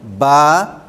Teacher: ان کو حروف شفوی اس لیے کہتے ہیں کہ یہ ہونٹوں سے ادا ہوتے ہیں۔ با ہونٹ دونوں مل رہے ہیں، میم دونوں ہونٹ مل رہے ہیں